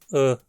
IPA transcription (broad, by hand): ə